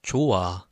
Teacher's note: the H sound is removed, okay?